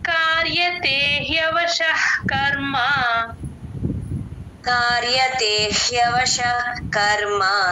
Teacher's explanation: ఇక్కడ కర్మ అని దీర్ఘం తీయకూడదు కర్మ కట్ చేయాలి